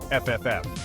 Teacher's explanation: It's a soft, smooth sound made by gently placing your top teeth on your bottom lip and blowing air out.